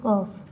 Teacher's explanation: জিহ্বার গোড়া তালুর সাথে লাগিয়া উচ্চারিত হয়